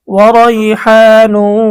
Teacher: ঈদগামে বা গুন্না, নুন সাকিন ও তানভিনের পরে ঈদগামে বা গুন্নার 4 হরফের কোনো একটি হরফ আসিলে তখন এই নুন সাকিন বা তানভিনকে গুন্নাহর সহিত মিলিয়ে পড়িতে হয়। এখানে তানভিনের পরে বা গুন্নার হরফ ওয়াও এসেছে, এজন্য আমাদেরকে গুন্না সহ মিলিয়ে পড়তে হবে।